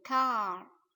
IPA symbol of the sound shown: a: